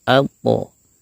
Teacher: Kembali ke suara yang tebal, yaitu o ya, suara yang mengarah ke o tebal, yaitu dengan menaikkan pangkal lidah kita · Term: huruf yang tebal